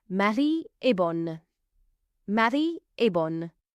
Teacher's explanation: the feminine version, bonne, ends in a vowel, you can pronounce the N sound